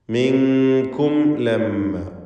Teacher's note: അപ്പോൾ ഫഫറർതു മിൻകും ലമ്മാ ഖിഫ്തുകും ഫവഹബലി എന്ന് മീമിനെ ഇൽഹാർ ചെയ്ത് വ്യക്തമാക്കി ഓതുക. ലമ്മ എന്ന് പറയുമ്പോൾ മീം മുഷദ്ദദ, ഷദ്ദുള്ള മീമിനെ മണിക്കുക.